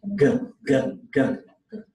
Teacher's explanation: The vocal cords are on with the G sound.